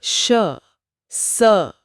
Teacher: मुंह से हवा एक संघर्ष के साथ रगड़ खाकर निकलती है जिससे एक हल्की सी गर्मी महसूस होती है। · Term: उष्म व्यंजन